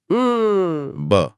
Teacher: ब एक स्पर्श व्यंजन है, जब आप ब बोलते हैं तो दोनों होंठ पूरी तरह से एक दूसरे से चिपक जाते हैं और हवा को कुछ पल के लिए रोक देते हैं